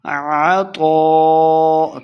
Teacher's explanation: تو کو موٹا پڑھیں گے، اس کے اوپر مد ہے تو اس کو لمبا کر کے پڑھنا ہے